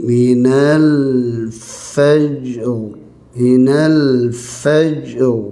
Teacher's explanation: oleh kerana sebelumnya ada baris atas, maka tebalkan ra ketika waqaf. Ketika berhenti saja ra tebal ya.